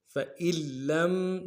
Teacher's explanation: فَإِن میں حمزہ کو لام کے ساتھ ملانا ہے، کیونکہ نون نہیں پڑھیں گے، لام کے اوپر تشدید ہے